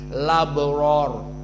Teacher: hamzahnya dihapus maka yang tertinggal harakatnya dimasukkan kepada lam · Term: naqel